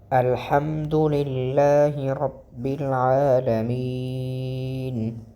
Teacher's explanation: الحمد، یہاں پر جو دال ہے وہ موٹا ہوگا۔ اس کی وجہ یہ کہ حروف قلقلہ میں آتا ہے، اور حروف قلقلہ کے 5 حروف قاف، طا، با، جی، دال، ان کو موٹا پڑھا جاتا ہے، ٹھیک ہے۔